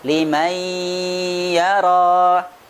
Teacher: Huruf nunnya melebur ke dalam huruf ya, tetapi sifatnya tetap ada. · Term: idgham bi gunnah